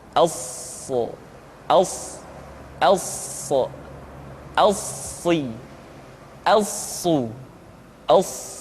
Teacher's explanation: sifat as-safir yang dimiliki oleh huruf so, yaitu suara tambahan yang terdengar menyerupai dengan suara angsa.